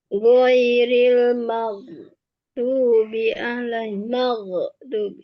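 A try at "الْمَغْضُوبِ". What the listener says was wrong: Nah, mau itu masih terdengar. Tapi terus ditahan maghdubi maghdubi tinggal ditahan saja. Tinggal maghdubi terus dialirkan. Asalkan tidak mau di apa ada lafaz e-nya ya. Seperti itu.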